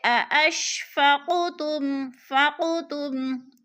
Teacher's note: قاف ساکن ہے اور حروف قلقلہ میں سے ہے، تو ہم نے اس کو ہلا کر پڑھنا ہے یعنی قلقلہ کرنا ہے۔